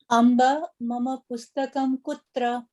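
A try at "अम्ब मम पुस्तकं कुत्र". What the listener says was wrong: I like that you pronounce this correctly. Amba and not Amba. Good. Uttam.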